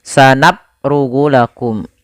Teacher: Pada lafal bacaan sanafrughu, fa-nya kita alirkan nafasnya, sanaf, af, naf. Kesalahan yang terjadi pada lafal huruf fa, dia menjadikan hurufnya menjadi p